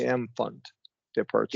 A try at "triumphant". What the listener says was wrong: yeah, yeah, that's right.